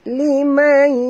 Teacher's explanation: Kena masukkan sepenuhnya ke dalam huruf ya disertai dengung dua harakat idgham ma'al gunnah